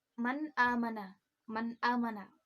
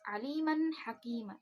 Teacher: kita membaca tentunya dengan jelas tidak boleh dibaca dengan dengung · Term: izhar halqi